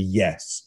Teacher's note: loud and downward intonation we tend to call command tonality